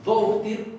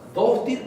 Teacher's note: esta D es tirando a oclusiva.